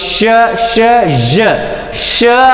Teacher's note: ಸೊ ಈ ಒಂದು ಜ ಸೌಂಡಲ್ಲಿ ನಾಲಿಗೆ ಅಲ್ಲಿ ಗ್ಯಾಪ್ ಸ್ವಲ್ಪ ಲಿಟಲ್ ಬಿಟ್ ಗ್ಯಾಪ್ ಇರ್ತಕ್ಕಂಥದ್ದು. ನಾಲಿಗೆ ಪೂರ್ತಿ ಹಾರ್ಡ್ ಪ್ಯಾಲೆಟ್ಗೆ ಟಚ್ ಆಗಿಲ್ಲ, ಸ್ವಲ್ಪ ಮುಂಭಾಗಕ್ಕೆ, ಮುಂಭಾಗದ ಒಂದು ಹಾರ್ಡ್ ಪ್ಯಾಲೆಟ್ನ ಮಧ್ಯಭಾಗ ಬಿಟ್ಟು ಸ್ವಲ್ಪ ಮುಂಭಾಗಕ್ಕೆ ಶ ಶ ಜ ಶ ಅಲ್ಲಿ ವಾಯ್ಸ್ಲೆಸ್ ಆಗಿತ್ತು, ಜ ಜ ವಾಯ್ಸ್ ಇಡೋ ಸೌಂಡ್ ಆಗಿತ್ತು.